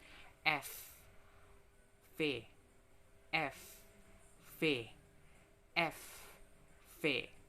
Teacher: Selanjutnya, ada labiodental, berkaitan dengan bunyi-bunyi bahasa yang terjadi karena penyempitan jarak antar bibir bawah dan gigi atas